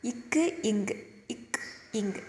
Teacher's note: சரி, ஃபஸ்ட்டு இப்படி ஞாபகம் வச்சுக்கோங்க. நாவோட முதற்பகுதி அன்னத்தின் அடிப்பகுதி.